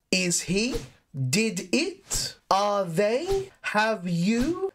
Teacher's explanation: the intonation will rise all of the time because it is a question that we are asking